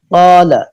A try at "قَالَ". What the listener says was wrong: قاف کو پر کیجئے. قال. جب پر حرف کے بعد الف آ جائے تو الف بھی پر ہوتا ہے. جب باریک حرف کے بعد الف آ جائے تو الف بھی باریک ہوتا ہے.